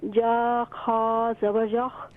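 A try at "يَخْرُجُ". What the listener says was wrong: یا کو اور خا کو صحیح طور پر ادا کریں را پیش رو جلدی نہ کریں یخرجو صحیح طور پر ادا کریں توجہ کے ساتھ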